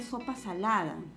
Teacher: tenemos nuevamente la vocal a que es una vocal baja central otra vez en salada se repite entonces no es la clave